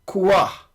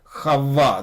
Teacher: this is actually a dagesh, not a shuruk, and so you have to geminate or double, make it double